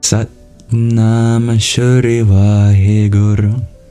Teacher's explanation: In Punjabi, which is an example of a schwa deleted language, the A at the end of Nama gets dropped, so it becomes Sat Nam.